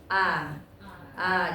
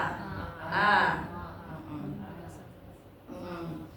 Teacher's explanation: Istifal, pangkal lidah turun ke dasar mulut sehingga suara menjadi tipis